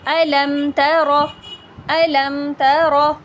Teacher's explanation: یعنی کہ میم ساکن کو ظاہر کر کے پڑھیں گے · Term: اظہار شفوی